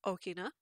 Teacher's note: glottal stop is written as an apostrophe historically here in hawaii the glottal stop is called okina which begins with a glottal stop